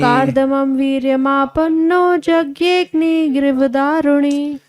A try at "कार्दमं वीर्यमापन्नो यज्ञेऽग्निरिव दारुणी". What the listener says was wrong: गिरी नहीं हो, यज्ञेऽग्निरिव दारुणी। कार्दमं वीर्यमापन्नो यज्ञेऽग्निरिव दारुणी, कार्दमं वीर्यमापन्नो यज्ञेऽग्निरिव दारुणी।